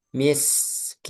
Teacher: Sinnya dialirkan suara dan udaranya.